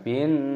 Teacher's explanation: Uqsimu bin, alif lam samsiyah, nunnya berharokat tasydid, maka dimasukkan, diidghamkan dan didengungkan